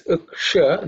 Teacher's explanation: cerebral Sha, Sha, which is the tongue pointing up